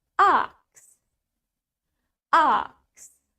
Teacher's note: Remember, British has longer A, so in British English, it's gonna be ox.